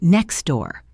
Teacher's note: the T sound at the end of next is almost always dropped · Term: elision